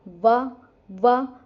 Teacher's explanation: जिसमें दांत और ओष्ठ दोनों ही मिले तो इनको कहते हैं दंतोष्ठ्य वर्ण